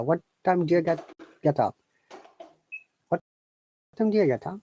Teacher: a native will not say do you, they will say do ya